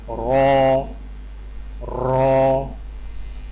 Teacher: را کی ادائیگی میں زبان کی نوک کی پشت کو اوپر والے دانتوں کے مسوڑوں سے لگا کر موٹی آواز میں پڑھیں، یعنی را را۔